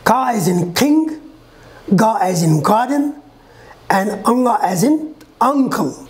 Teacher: the back of the tongue touches the soft palate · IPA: /k,g,ŋ/